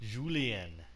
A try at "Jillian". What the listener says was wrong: Julian? No, there's no U in there.